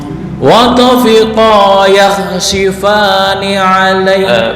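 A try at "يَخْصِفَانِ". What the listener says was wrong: Belum, masih tercampur dengan shin. Wa tafiqa yakhsifa yakhsi si bukan shi, bukan si. Biasa si yakhsifa yakhsi.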